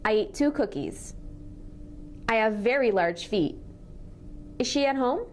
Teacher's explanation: we're linking consonants with similar sounds. When we do that, we only say the sound once